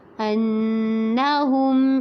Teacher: انہم پہ نون مشدد پہ غنہ کرنا ہے